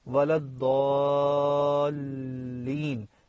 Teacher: یہ لازم مد ہے، اس پہ کسی کا اختلاف نہیں ہے، کوئی جھگڑا نہیں ہے۔ یہ 6 گنا لمبی کرنی ہے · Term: مد لازم